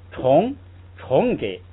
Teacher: 这个虫呢是二声，就是直接往上扬，但是因为后边跟了一个轻声呢，它会自然的有一个下垂